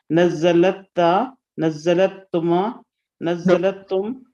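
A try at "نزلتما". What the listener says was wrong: Nazal, the lam should be with a sukoon. From the sixth form, nazal na, nazal ta, nazal tuma.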